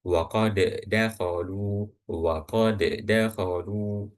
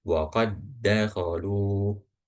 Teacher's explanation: walaupun dal ini itu huruf qalqalah ketika disukunkan, tapi ketika bertemu dengan dal lagi dan yang berharokat fathah, dhammah atau kasroh, maka yang pertama ini langsung dimasukkan ke huruf yang kedua. Jadi bukan bacanya itu waqad dakhalu waqad dakhalu, bukan, tapi langsung masuk ke dal yang kedua.